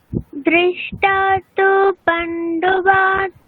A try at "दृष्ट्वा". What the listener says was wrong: দেখুন দৃষ্টা নেই, ঠিক আছে, ওটা উচ্চারণ কিরকম হবে, দৃষ্ট্বা, ঠিক আছে, মানে ওখানে যখন যুক্তাক্ষরের ক্ষেত্রে যখনই দেখবেন মানে বকার আছে শেষে, তাহলে উচ্চারণ কিরকম করবেন, তো ওখানে কি আছে, হ্যাঁ দৃষ্ট্বা, যেমন আমরা মানে কৃত্বা, কৃত্বা, তাহলে দৃষ্ট্বা এরকম।